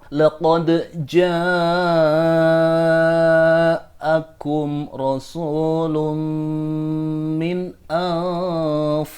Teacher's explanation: Huruf dal dalam 'qad' yang bertemu dengan jim harus dibaca sebagai 'izhar'.